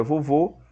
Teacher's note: Nós temos o acento circunflexo, o som mais fechado, como na palavra vovô.